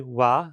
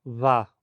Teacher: A consoante wa se tornou va, uma fricativa bilabial.